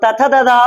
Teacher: त थ द ध इन वर्णों का उच्चारण आपका दंत से होता है · तथा दादा आप बोलने का प्रयास करेंगे तो जीभ आपका दंत में स्पर्श होता है